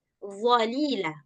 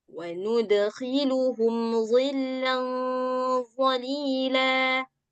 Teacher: Sementara dha letaknya di ujung lidah. Bertemu dengan gigi seri atas bagian luar.